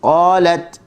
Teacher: Dan huruf ta, hujung lidah letak di gusi.